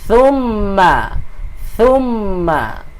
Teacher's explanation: Yang ni huruf tha. Tha ni kena keluar sedikit lah hujung lidah kita.